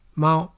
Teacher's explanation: Let's start with the first tone in Mandarin, and that's a high flat tone